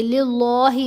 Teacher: اب ہم درمیان والی لام کو باریک پڑھیں گے